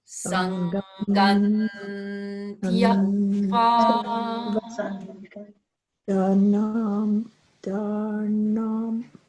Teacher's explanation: The T of Tyaktva begins at the teeth.